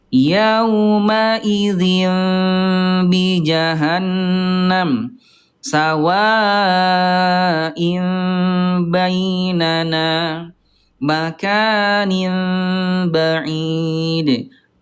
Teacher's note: bunyi vokal in bertemu dengan ba ya, berubah menjadi mim bunda yang disertai dengan dengung juga ada samarnya